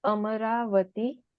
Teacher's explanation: it's a word ending in a short a plus vati, but the a lengthens.